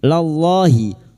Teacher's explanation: lam jalalah yang didoli fathah dibaca tafkhim